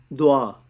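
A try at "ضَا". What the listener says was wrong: মানে দোয়া না, বাই দ্য ওয়ে আমি একটু আপনার, আই এম সরি টু, এটা উচ্চারণটা করতে হবে গোল, এখানে কোনো ওয়াই এর কোনো কাজ নাই। দোয়া না, দ দ দ, লাইক এই দ কিন্তু এই এটা মানে গোল করে মুখ, দ দ।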